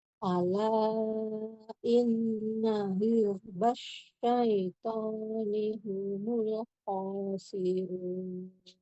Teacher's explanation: Huruf zai tidak mantul. Alirkan lagi.